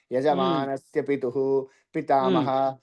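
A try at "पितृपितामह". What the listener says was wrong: పితుహు అంటున్నారండి యజమానస్య పితృపితామః ప్రపిత ఇక్కడ అలా లేదండి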